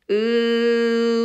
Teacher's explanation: 으 발음하다가 평평하게 펼쳐진 입술을 오므려 보세요